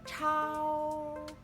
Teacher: kalau misalkan CH sendiri ini mengeluarkan udara atau aspirasi.